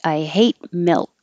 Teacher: I hate, you don't have to release the T. I hate milk. You don't also have to release the K either. Milk. Just hold it.